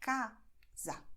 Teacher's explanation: It's the same letter A, but it's open and then it's close